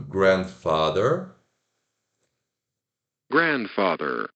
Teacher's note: é o grand que é o sílaba tônica